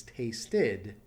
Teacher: since it ends at a tea that's one of the exceptions you add the syllable and it becomes an ED ending